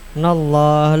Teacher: Nallah lam jalalah tafkhim, lafaz Allah didahului fathah tebal bacanya.